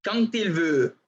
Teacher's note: la D, se fijan, muta a T